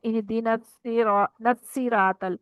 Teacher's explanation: स्वाद की बजाय हमने सीन पढ़ दिया, तो की बजाय ता पढ़ दिया, और कौफ की बजाय हमने काफ पढ़ दिया